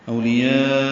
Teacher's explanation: یا الف مدہ کے بعد حمزہ واو کی شکل میں، لیکن ایک ہی کلمے میں، اس لیے یہاں پہ مد متصل ہے